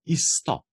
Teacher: ker sta dva s-ja skupaj, se to kar poenostavi, zato dejansko slišite izgovor izstop. Torej, malo je dvojna stopnja, ker se ta dva s-ja kar poenotita v enega.